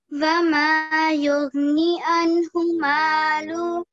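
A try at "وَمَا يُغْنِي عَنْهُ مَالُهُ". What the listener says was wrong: Okay, don't rush through the knee, okay? Vama yughni anhu malu. Maluhu. Anhu maluhu. Wama yughni anhu maluhu.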